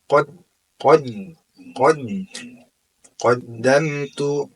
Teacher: Kemudian yaqu ya laitaniamati [Musik] berjumpa dengan dal. Dalga merupakan huruf asyiddah. Jadi suaranya tertahan